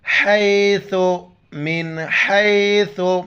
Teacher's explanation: ثا کے وقت زبان باہر نکالنا ہے